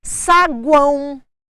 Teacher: Olha o O assumindo o som de U. A letra O assumindo o som de U significa semivogal, vogal, semivogal.